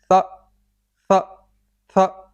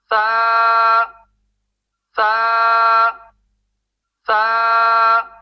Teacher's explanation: سا کے آخر میں جھٹکا نہیں دیں گے، یعنی کہ سا سا سا اس طرح نہیں کریں گے، بالکل آہستہ سے اسٹیٹ بالکل سیدھا پڑھنا ہے اس کو۔